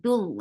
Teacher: this dal is not anymore long, but it is attached with lafz jalala. Dul, and that lafz jalala will be heavy because you can find the ma before it.